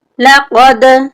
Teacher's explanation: یہاں پہ 2 نقطوں والی قاف ہے، اس کو ہم موٹا کر کے پڑھیں گے